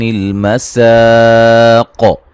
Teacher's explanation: قاف کو موٹا کریں گے اور قلقلہ کریں گے، وقفاً. قاف کو وصلاً وقفاً موٹا پڑھا جائے گا، ٹھیک ہے جی، کیونکہ یہ موٹا حرف ہے.